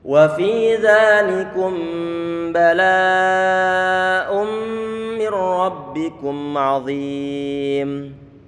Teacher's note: Bertemu dengan huruf yang berharokat. Nun sama mim perlu untuk diidghamkan. Sehingga menjadi satu huruf mim yang bertasydid.